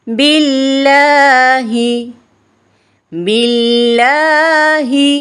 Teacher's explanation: زبان کے باریک کنارے کو اوپر والے دانتوں کے مسوڑوں سے لگا کر باریک آواز میں پڑھیں گے. اور لام کے اوپر کھڑا زبر ہے، ایک الف کے برابر لمبا کر کے پڑھیں گے